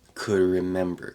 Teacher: So that D before the R gets a little bit weaker.